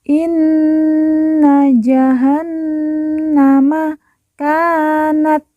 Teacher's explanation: Nun yang bertasdid langsung kita tekan kita tahan dua harakat dan didengungkan